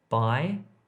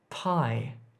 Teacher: This is unaspirated versus aspirated sounds.